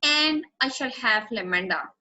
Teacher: Notice how stress I shall and lamenda.